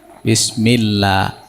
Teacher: lamnya Allah, jika sebelumnya i, maka lamnya dibaca la